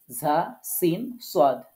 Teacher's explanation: জিহ্বার আগা সামনের নিচের দুই দাঁতের আগার সাথে লাগিয়ে ঝা, সিন, সোয়াদ, কেমন করে উচ্চারণ করতে হবে, শীষ দিয়ে, মানে উচ্চারণের সময় একটু শীষ মতো ইয়ে হবে।